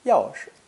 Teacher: Notice that 是 is unstressed in this phrase